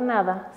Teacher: se realiza colocando la lengua sobre los alveolos los cuales se encuentran en la cavidad que alberga cada uno